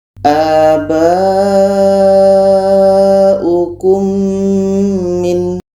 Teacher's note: Maka ini adalah mad wajib muttasil. Kita panjangkan 4 sehingga 5 harakat.